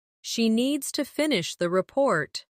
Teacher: Stress needs and report. And let the small words fall quietly.